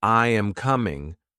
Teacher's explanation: But when I say, I am coming, my voice goes down.